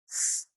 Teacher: s voiceless. There was no vibration of the vocal cords.